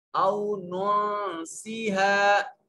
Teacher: نون ساکن کے بعد سین حروف اخفا میں سے یہاں اخفا ہو رہا ہے، یہاں الف مدہ ہے۔